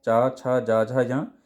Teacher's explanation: इनका उच्चारण तालु से होता है, उन्हें तालव वर्ण कहते हैं